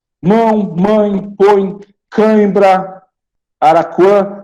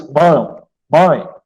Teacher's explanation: Você pode ver que sai tudo pelo nariz. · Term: Ditongos nasais